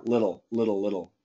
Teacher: now I just said little with dark L